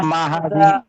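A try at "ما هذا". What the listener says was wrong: এই যে দেখেন, এটা হচ্ছে গিয়া মা হাদা হাদা, এটা হচ্ছে জাল, এটা জিম না, এটা হাজা হবে, হাজা হবে না, হাজা। হাজা নরম করে, নরম।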